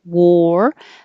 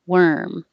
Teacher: Warm. Looks like an A, sounds like an OR. Warm. Round your lips a lot.